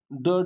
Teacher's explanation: उच्छिप्त व्यंजन, ड ढ जिसे पढ़ा जाता है, हिंदी के ड ढ व्यंजन उच्छिप्त व्यंजन कहे जाते हैं। इनके उच्चारण में जीभ ऊपर मूर्धा को स्पर्श करके तुरंत नीचे गिरती है।